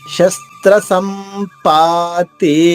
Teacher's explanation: సం అక్కడ మ పుల్లుగా ఉంది పా పూర్ణంగా దీర్ఘంగా ఉంది శస్త్ర సంపాతి అలా పడితే సరిపోతుంది ఆ ఎప్పుడు కూడా మీకు కొంచెం ఇబ్బంది · సమ్ అక్కడ మా పుల్లుగా ఉంది, పా పూర్ణంగా దీర్ఘంగా ఉంది.